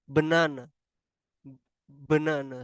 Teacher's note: the first syllable from the word banana is stronger than the next two syllable so the bra is pronounced with more emphasis than the Nana · So the ba is pronounced with more emphasis than the nana